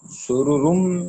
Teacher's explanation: نون تنوین کا ادغام میم میں ہو رہا ہے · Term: ادغام مع الغنہ